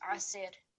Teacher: So this will be, because there's no ya there, it's going to be asir. So no prolongation, just asir.